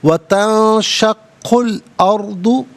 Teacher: اور قاف پر پیش ہے، اسے الارض کے لام ساکن کے ساتھ ملائیں گے، درمیان میں سے الف یعنی حمزہ کو حذف کیا جائے گا۔ را ساکن ما قبل حمزہ پر زبر، را ساکن کو پر کر کے پڑھیں گے۔